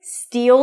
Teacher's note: To pronounce this phrase, steal, that's a high E and a dark L